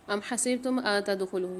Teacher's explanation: یہاں پر نون ساکن کے بعد تا آ رہی ہے تو یہاں غنہ کر کے پڑھیں گے